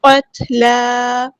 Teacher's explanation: تا ساکن میں ہمز کی صفت شو ہوگی، قط نہیں کرنا